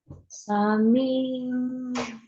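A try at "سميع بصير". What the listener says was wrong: Ya, ainnya tetap Sami'um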